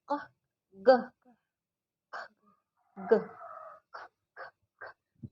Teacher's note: Velar ini yang di bagian langit-langit lunak belakang.